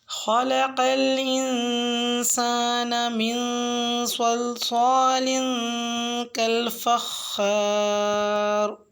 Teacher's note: آیت نمبر 14 میں لفظ خلق الانسان میں خا کو اور قاف کو پر پڑھیں اور نون ساکن پر غنہ کریں، اور صلصال میں صاد کا مخرج صحیح ادا کریں۔